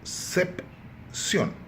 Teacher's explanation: A tônica, ou seja, a sílaba forte é a última. Portanto, é uma palavra aguda.